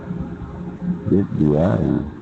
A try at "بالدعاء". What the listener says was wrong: No, bid-du'a, you would just stop and say bid-du'a unless you were reading, and you could say it quickly. You would do it quickly. But if you're stopping, ويصدر رسائله بالدعاء.